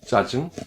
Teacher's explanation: tendu, aucun souffle, tension, comme 짜증, l'agacement. La main devant la bouche ne ment pas.